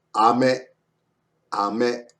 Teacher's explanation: A little bit stress on the me.